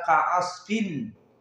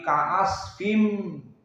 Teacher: Karena nun tanwin, nun sakinah masuk kepada mim, sehingga nun melebur kepada mim, tidak dibaca kaasfin, tapi kaasfim, masuk kepada mim, hada huwa idgham.